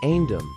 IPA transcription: ˈhænsəm